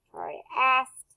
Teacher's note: the ED says the T sound because the K is unvoiced. And so the ED is unvoiced.